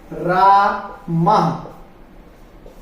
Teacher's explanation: विसर्ग की जो ध्वनि है एक झटके से हमने निकालनी है